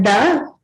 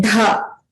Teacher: That was an Alpa Prana, Da. Now we look at the Mahaprana, Dha.